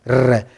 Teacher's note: जब हम र वर्ण का उच्चारण करते हैं तो हमारी जीभ में क्या होता है? कंपन होता है, कांपती है हमारी जीभ। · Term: परकंपित